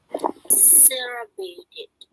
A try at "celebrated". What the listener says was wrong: You have whenever you read, you actually miss the ed sound.